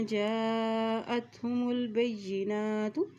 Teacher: हमज़ा के ऊपर मद है तो उसको लंबा अदा करेंगे